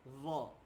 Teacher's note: Za tu kita letak kan lidah kita ni depan dia letak dekat gigi.